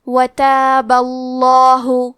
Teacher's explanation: کلمت وتابہ کے آخری میں با پہ زبر ہے، لہذا لفظ الجلالہ کے لام کا حکم ہے تفخیم، تو ہم حرف اللام کو موٹی آواز میں پڑھیں گے